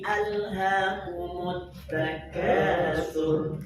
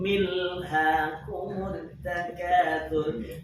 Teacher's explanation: Ketika al pada alhaakum, maka hamzahnya wajib dihidupkan. Kenapa? Hamzahnya hamzah qata.